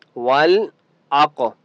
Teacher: क़ाफ मुस्तअला में से है, क़ाफ को मोटा पढ़ेंगे और क़ाफ के ऊपर क़लक़ला भी होगा क्योंकि क़ाफ हरूफ़ क़लक़ला में से भी है।